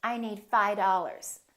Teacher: That V in the word five just kind of disappears